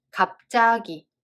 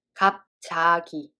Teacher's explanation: did you notice what just happened the consonant of the second syllable became tensed